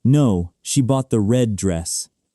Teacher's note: You stressed red because that's the new information. The color is what's different from what they asked about.